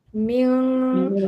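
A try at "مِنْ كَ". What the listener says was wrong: Tu bunyi tebal tu. Kalau ming tu tebal.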